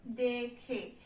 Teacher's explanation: এগুলো হচ্ছে পদ, এবং পদের শেষে এ ধ্বনির উচ্চারণ, পদের শেষে এ ধ্বনির সংবৃত উচ্চারণ হয়